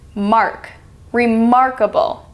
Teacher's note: see how only part of the word of remark is stressed